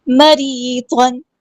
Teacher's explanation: کو پورا ادا کریں گے، اور ضاد پر 2 زبر ہے، 2 زبر کی یعنی تنوین کی آواز کو ہم یہاں پہ ظاہر کریں گے، اظہار ہو رہا ہے